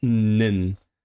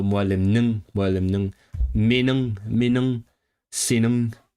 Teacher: In Turkish it will be like nin, but in Uyghur you have the original ng.